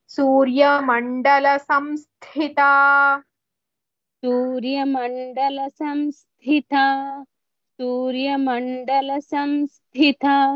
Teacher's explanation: సంస్థిత in the word the థా with సా is మహాప్రాణ other one is అల్ప ప్రాణ